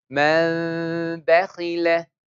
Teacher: After noon sakin, if letter ba appears, we change the sound of noon into meme. So this is a small meme over there with ghunna.